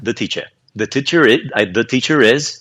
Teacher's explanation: Esse R não existe a não ser que a palavra seguinte comece com uma vogal.